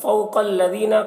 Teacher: قاف کو پر پڑھیں گے، قاف حروف مستعلیہ میں سے ہے، دال کو باریک پڑھیں گے.